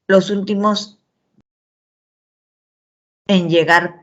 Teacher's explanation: la oración ha sido interrumpida, ¿no? Por lo tanto, tiene una entonación horizontal.